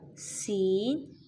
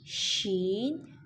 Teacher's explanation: سین میں سیٹی ہوگی جبکہ شین اس میں تفشی پیدا کریں گے